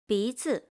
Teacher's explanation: The second word loses its original tone, zi, and become neutral tone.